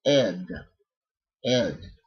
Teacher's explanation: t t and the third possibility is that you pronounced Ed you pronounce the vowel and you pronounce the consonant in this case it's going to be again a voiced D using the vocal cords